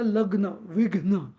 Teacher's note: लग्न तो असं लग्न असं हलक्या अक्षरात नाही म्हणत आपण. लग्न म्हणजे ॲक्च्युअली तो म्हणताना आपण डबल अर्ध्या वेळात डबल ग म्हणतो. म्हणून त्याला लग्न, विघ्न.